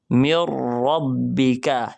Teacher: ہم نون کو درمیان سے ختم کر کے ادغام ہونے کی وجہ سے میم کے بعد فوراً را پڑھ دیں گے، یعنی میم کو را سے ملا دیں گے، مر ربک۔